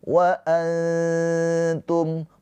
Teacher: Ketika nun sukun bertemu dengan huruf ta, hukumnya adalah ikhfa hakiki. Cara bacanya nun sukunnya ditahan dua harakat. Ee ditahan dua harakat dengan samar. Jangan jelas.